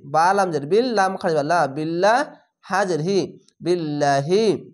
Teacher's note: এখানে নিচে জের আসলে লা পাতলা করে হবে